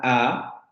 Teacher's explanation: a la a y nos vamos a dar cuenta también que la boca y los labios no quedan no se redondean quedan de hecho muy abiertos pero lo que ocurre es que la lengua adquiere una posición un poco más atrás es decir se va más a la parte posterior de la